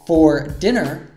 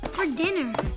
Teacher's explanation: So for usually reduces to fur.